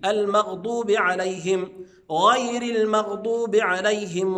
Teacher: الضاد فيها صفه اسمها صفه الاستطاله